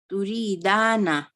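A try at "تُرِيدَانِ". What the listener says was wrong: Dani. No, it's turidani. Yeah, there is a kasra on noon. Okay, so it's turidani.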